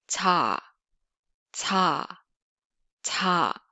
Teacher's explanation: Korean 자 is tip of the tongue forward and the middle of the tongue blade lifted, touching the hard palate